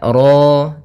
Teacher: ro tafkhim rnya tebal ya kita namakan dengan ro tafkhim ro tafkhim rnya tebal maka